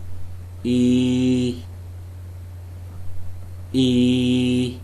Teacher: below and behind the closed front position the leaves are spread the tongue is tense with the side rims making a firm contact with the upper molars the tongue tip is behind the lower teeth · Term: long vowel sound